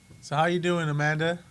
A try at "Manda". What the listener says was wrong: Amanda. You said Amanda. Her name is Manda.